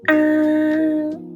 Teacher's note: Can you tell the tone is high and flat?